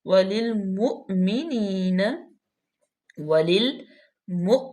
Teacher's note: یا مشدد ہے، اس کو سختی سے پڑھیں گے، وللمؤمنین، وللمؤمنین، یہاں پہ جھٹکا پیدا کریں گے کیونکہ یہاں پہ حمزہ ہے ، لام زیر، لام لیل باریک دونوں، میم پہ پیش ہے،